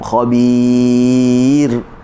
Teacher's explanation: Okey, baca dengan nipis. Bagaimana kita nipiskan ra? Hujung lidah kita kekalkan di atas lagi. Selesai baru kita tarik. Kalau kita tarik awal, ia akan menyumbang kepada tebal lah.